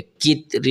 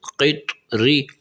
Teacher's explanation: قاف طا زیر قط، را زیر ری، قط ری۔ یہاں قاف بھی موٹا کر کے پڑھنا چاہیے اور طا کو بھی موٹا کر کے پڑھنا چاہیے